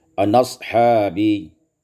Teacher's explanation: naqalkan fatah kepada nun dan buangkan hamzah